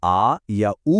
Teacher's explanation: जब आ या ऊ बोलते हैं तो जीभ का पिछला हिस्सा काम करने लगता है।